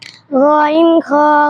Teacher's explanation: হলকের শেষ হইতে গইন খ উচ্চারিত হয়